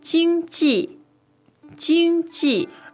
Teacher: it's first tone and it's fourth tone